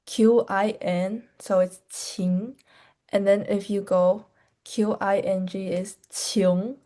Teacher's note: And the feature dialects or accents in Jiangsu province is that we do not emphasize the difference between N and NG